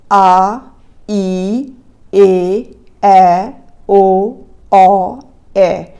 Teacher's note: ਇਹ ਦੁਗਣਾ ਸਮਾਂ ਲੈਂਦੀਆਂ ਨੇ ਲਘੂ ਦੇ ਨਾਲੋਂ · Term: ਦੀਰਘ